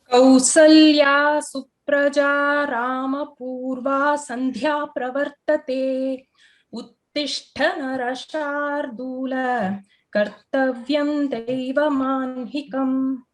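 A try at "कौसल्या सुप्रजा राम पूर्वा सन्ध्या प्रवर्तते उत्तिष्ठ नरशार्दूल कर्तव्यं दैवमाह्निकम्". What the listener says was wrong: Uttamam Bhagini.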